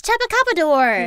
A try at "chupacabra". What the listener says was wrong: No, I think that's the worst one at all. Yeah, wait, there's not even a D in this word.